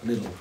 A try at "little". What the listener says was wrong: So in British English, it's like a T, but yours are like a D, so little.